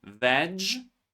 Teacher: As you can see, the last e and the second e are not pronounced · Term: silent E